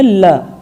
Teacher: तो वर्ष का क्या मतलब होता है कि जीभ का जो अगला भाग है उसमें मसूड़ों के पिछले भाग को स्पर्श करता है, यानी जीभ मसूड़ों के पीछे वाला जो खुरदुरा सा भाग है वहाँ पर जाकर टकराती है